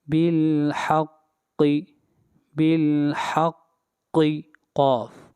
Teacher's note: قاف کو موٹا پڑھیں گے، قاف حروف مستعلیہ میں سے ہے